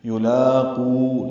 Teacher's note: یلاقو، لام پر کھڑا زبر ہے، باریک پڑھیں گے، دو حرکات لمبا کریں گے